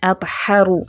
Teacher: ہ اکسل حلق سے ادا کرنا ہے، ہا نہیں کر دینا